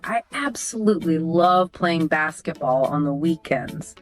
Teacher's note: That upward lift on weekends shows your passion.